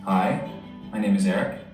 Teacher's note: uh so what is upt talk or upspeak it's going up at the end of a sentence going up with your pitch using a rising tone · So you're going up, it's rising, it's high, and it's at the end, so it's terminal. At the end of a sentence. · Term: High Rising terminal, high rising terminal